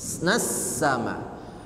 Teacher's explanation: Alif lamnya tidak dibaca secara hukum namanya alif lam syamsiah